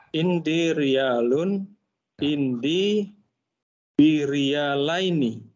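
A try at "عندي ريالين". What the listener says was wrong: Enggak ada bi-nya, Pak. Indi. Jangan ditambahin. Nah, indi riyalani.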